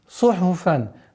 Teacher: Сад – свистящий звук. Ха – гортанный, фа – фрикативный.